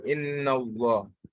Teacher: Because of the fatha preceding the Allah, it is pronounced with a full mouth.